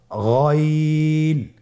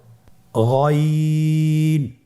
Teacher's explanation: গইন হরফটি উচ্চারিত হয় কণ্ঠনালীর শেষ ভাগ হতে। এখান থেকে উচ্চারণ করুন গইন।